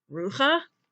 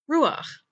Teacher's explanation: When the last letter of the word is chet, and it's followed by a patach, the patach is usually pronounced first.